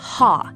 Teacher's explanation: a deep, breathy H sound produced by pushing air from the middle of the throat. It is much deeper than the standard English H and should sound like a sharp, breathy sigh.